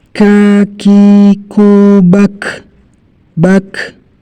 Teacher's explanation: Di sini ada hamesnya, keluar nafas yang berjalan.